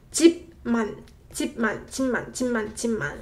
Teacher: you'll hear 집만 with 비읍 받침 becoming 미음 받침 sound. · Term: consonant assimilation